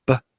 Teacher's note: They're both stops, b, p, right? They're both bilabials. The only difference is the voicing in b and p.